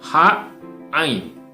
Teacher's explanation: H dan Ain, ya, di tenggorokan tengah